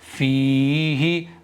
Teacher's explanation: میں نے فا کو کھینچا ہے اور ہا کو تھوڑا سا بھی نہیں کھینچا ہے